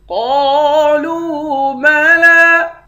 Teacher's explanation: تکاد تمیز من الغیظ کلما القی فیہا فوج سألهم خزنتها ألم يأتكم نذير قالوا بلى قد جاءنا نذير فكذبنا وقلنا ما نزل الله من شيء إن أنتم إلا في ضلال كبير قالوا بلى، قاف کو موٹا پڑھیں گے، ایک الف کے مقدار کھینچ کر پڑھیں گے، لام کو واو کے ساتھ ملا کر ایک الف کے مقدار کھینچ کر پڑھیں گے، دونوں حروف مدہ ہیں۔